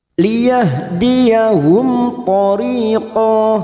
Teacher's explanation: Mim sukun dibaca jelas tanpa mendengung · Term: idhar safawi